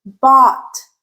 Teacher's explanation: Ah, rounded, tense. Bought.